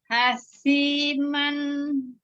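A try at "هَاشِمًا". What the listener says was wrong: Yuk, shi-nya tadi makhrajnya bukan dari syafatain tapi dari al-lisan.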